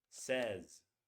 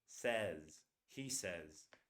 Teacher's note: But if I say he, she, or it, basically third person singular, it's going to be spelled like this with an S, but it's not pronounced like says. It's pronounced like this. Says. A single vowel like that and a Z.